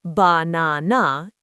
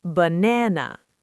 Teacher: The first and last a are reduced to the schwah.